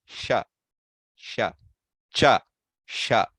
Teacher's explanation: The small difference in between the cha is fully touching, sha is a little air, and e is fully open